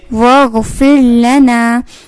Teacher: اب یہاں پہ آپ نے غین کی ساؤنڈ جو ہے وہ نکالنی ہے، غین کی آواز نکالنی ہے حلق کے ابتدائی حصے سے